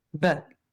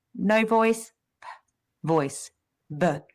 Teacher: we have our our lips together. We have air coming out quickly.